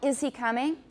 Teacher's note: the first sound is not it's not a vowel it is a glottal stop